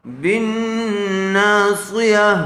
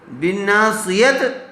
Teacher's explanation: کرتے وقت اس کو ہا ساکنہ سے بدل لیا جائے گا، یعنی گولتا کا ہا ساکنہ بن جائے گا، تو ہا کی آواز آئے گی